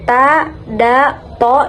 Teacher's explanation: Ta, da itu tipis, kemudian yang to itu tebal.